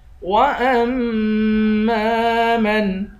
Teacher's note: حمزے کو میم سے ملا کر میم پر غنہ کریں گے، میم کو 1 الف کی مقدار کھینچ کر پڑھیں گے